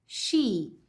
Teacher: O SH vai ter som de sh, como em xícara, vai ter um sonzinho muito parecido com xícara, mas esse I é um pouquinho mais comprido.